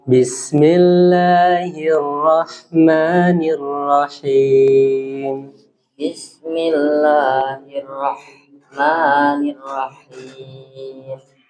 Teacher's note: Hi-nya biasa. Maksudnya hi-nya ha biasa, terus ha-nya jangan terlalu dipaksa ya.